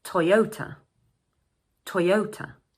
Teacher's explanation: "O" But the "a" is pronounced "Uh". This is a three syllable word and the second syllable is stressed.